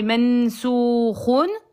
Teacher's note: Tu peux faire un temps et demi sur le noun.